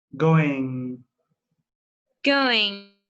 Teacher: to remove the g when we have ing or just mg we tend to remove the g and lengthen the sound of the n